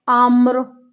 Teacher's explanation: یہ را موٹی پڑھی جائے گی کیونکہ را ساکن ہو جائے گی، را ساکن سے پہلے زبر کی حرکت۔ وقف کی صورت میں ہمیں اس را کو موٹا پڑھنا ہے